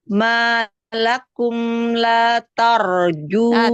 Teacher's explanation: Taknya tipiskan, ro-nya tebal. La tarjuna, taknya kasih hamas tipiskan.